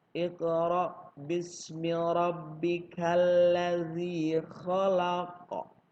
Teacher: Huruf qaf di belakang di akhir ayat pertama harus kita pantulkan. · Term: qalqalah